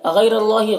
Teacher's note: را کے اوپر زبر ہے تو را کو پر پڑھیں گے، اور یہ اللہ کے لام سے پہلے را کے اوپر زبر ہے تو اللہ کے لام کو پر پڑھیں گے